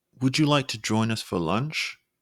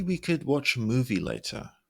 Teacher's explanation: your voice Rising on the last two words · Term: Rising inflection